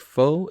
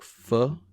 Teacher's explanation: changes from a big foe in the first word to something more like fu in the second